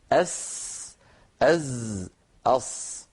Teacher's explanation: الصاد حرف لساني أسناني، مثلها كمثل السين كمثل الزاي